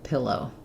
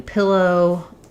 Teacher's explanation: So same first syllable stress, same vowels in the beginning, and then just thinking of that O being nice and round and then kind of closing as we finish the diphthong